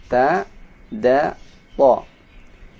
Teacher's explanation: Menempati posisi nomor 2 ini artinya ujung lidah menempel di gusi belakang atas. Ujung lidah menempel di belakang gusi atas. Hurufnya ta, da, to.